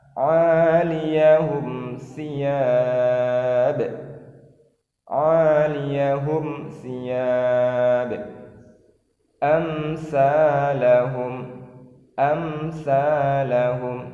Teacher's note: Amsalahum. Jadi mim mati am bertemu dengan sa, tidak boleh ditahan. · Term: idhar syafawi